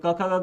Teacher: क ख ग कंठेमध्ये येणार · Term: कंठ्य